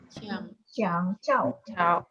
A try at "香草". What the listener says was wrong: Soalnya ada 3 loh, bukan ada 4, jangan ditekan. 香草. 香草.